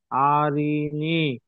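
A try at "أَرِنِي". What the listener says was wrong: আর ই নি। আ টান দিলেন কেন? হারাকাত আছে না? আর ই নি।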